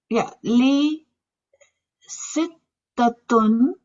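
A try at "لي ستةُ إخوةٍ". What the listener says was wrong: Sittato, not without tanween.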